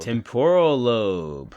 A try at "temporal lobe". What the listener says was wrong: Not tempura. You kind of put a little temporal.